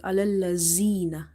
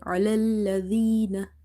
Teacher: Zal is from the tip of the tongue.